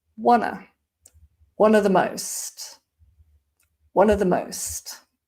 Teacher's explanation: of is very weak, becomes wanna